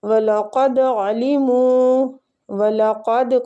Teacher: قاف مستعلیہ دال پہ قلقلہ کریں گے. عَلِمُوا کو کھینچیں گے، وہ مد ہو رہی ہے.